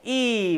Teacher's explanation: ये अग्र संवृत स्वर है